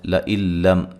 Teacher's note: لئن لم، یہاں نون ساکن کا جو ہے وہ ادغام ہے بلا غنہ، ٹھیک ہے. لم، میم ساکن کا اظہار ہے.